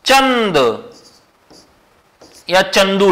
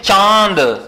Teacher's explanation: चंदू शब्द का उच्चारण हम नाक दबाकर नहीं कर सकते लेकिन चांद का उच्चारण नाक दबाकर थोड़ा बहुत कर सकते हैं क्योंकि ये अर्ध है अनुस्वार का अर्ध है और यह अनुस्वार